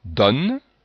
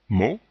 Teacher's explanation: deux prononciations pour le son O, le O ouvert, donne, le O fermé, mot